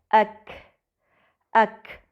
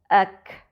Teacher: آپ محسوس کریں گے کہ آپ کی زبان کا پچھلا حصہ تالو کے نرم اور سخت حصے کے ملنے کی جگہ سے ٹکراتا ہے۔ کاف ایک باریک یعنی مرقق حرف ہے